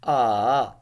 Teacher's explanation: the third tone ah, that going down and then going uplift